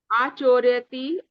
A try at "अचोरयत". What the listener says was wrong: नहीं, अ। दीर्घ आ नहीं आएगा, ह्रस्व अ आएगा। नहीं, अचोरयत, अचोरयताम, अचोरयन।